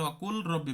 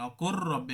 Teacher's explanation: এই যে এর আগে কিন্তু রব্বির হামহুমা কামা, এর আগে কিন্তু অকুর এভাবে বলা আছে, তখন আমরা অকুল রব্বি পড়বো না, অকুর রব্বি একসাথে মিলাই দেবো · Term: ইদগাম